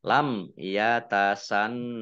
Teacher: nun tasdid dibaca gunnah atau mendengung ya ditahan dua harokat. Nah, kemudian hak sukun ini wakof dibaca pendek wakofnya karena tidak ada tanda panjangnya.